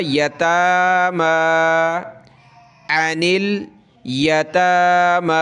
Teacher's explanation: एक एक अलिफ की लिमिट में इन दोनों को खींचेंगे, ता और मीम को